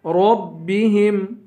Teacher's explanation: ربہم را کو پر پڑھیں گے